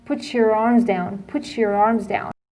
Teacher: you can notice that there is sh sound between put and your